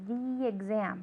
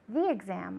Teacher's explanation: Okay, so for the exam, there we use that link, okay? It's same vowel to same vowel, so the exam, right? That's why it sounds like one word.